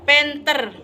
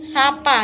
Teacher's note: P merupakan kontoid plosif dan tak bersuara dan tak beraspirasi. Selaput bersuara, tidak bergetar.